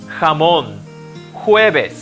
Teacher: the letter j in spanish sounds close to the letter h in english like in the word house although it's pronounced with a bit more force